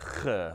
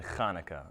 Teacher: It's bouncing the uvula off the back of your tongue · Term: Chet